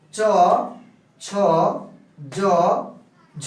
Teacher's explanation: এই ব্যঞ্জনগুলো উচ্চারণ হয় তালু থেকে। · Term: তালব্য ধ্বনি